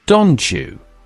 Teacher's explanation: feel how the t and j merge to form a ch sound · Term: coalescent assimilation